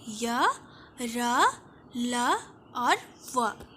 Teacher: जिन अक्षरों के उच्चारण में जीवा मुंह के विभिन्न भागों को पूर्ण रूप से स्पर्श न करे उन्हें अंतस्थ कहते हैं। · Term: अंतस्थ व्यंजन